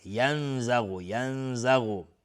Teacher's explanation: نون ساکنه زای اخفای حقیقی. غین از حروف استعلاء بینهم.